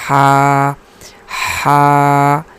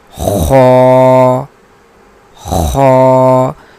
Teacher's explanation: ہا اس کو باریک پڑھا جاتا ہے اور خا کو پر پڑھا جاتا ہے · ہا وسط حلق سے ادا ہوتی ہے اور خا ادنائے حلق سے، تو اس کو بھی ذرا دیکھنا چاہیے، کیونکہ اگر ہم یہ بھی پڑھیں خا اور اس کو بھی خا پڑھیں تو یہ دونوں ایک ہو جائیں گے، حالانکہ ان دونوں کا مخرج الگ الگ ہے، اس لیے اس کو پڑھیں گے ہا ہا، خو خو۔